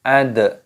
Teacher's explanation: dalnya berharokat sukun, ini dibaca qalqalah ataupun dipantulkan suaranya